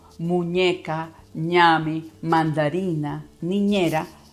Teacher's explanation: Si se colocan la mano aquí en la nariz y dicen palabras como muñeca, ñame, mandarina, niñera, con la mano colocada aquí van a ver cómo vibra, es natural. La M, la N y la ñ son los 3 únicos sonidos que en el español vibran en la nariz